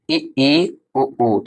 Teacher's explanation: संवृत स्वर वे स्वर होते हैं जिन स्वरों के उच्चारण में मुख द्वार लगभग बंद रहता है